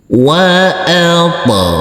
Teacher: huruf ghain kita baca panjang dengan panjang 2 harokat karena di atasnya ada huruf alif kecil yang berdiri tegak lurus.